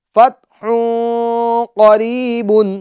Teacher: نون کی آواز کو، نون ساکن کی آواز کو ہمیں پوشیدہ رکھنا ہے، چھپانا ہے، اور اسی کو اخفا کہتے ہیں